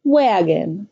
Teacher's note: The first syllable is stressed; the second syllable is unstressed. The vowel sound becomes indistinct or neutral. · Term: schwa